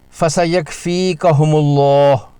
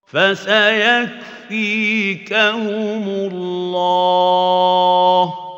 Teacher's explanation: نہ کاف پر کلکلہ نہ میم پر غنہ اور لام جلالہ پوری تفخیم کے ساتھ پڑھا جائے گا